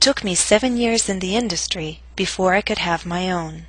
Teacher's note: to use falling intonation in both thought groups but note that your voice must reach a lower note on own compared to industry own must reach a lower pitch to signal the end of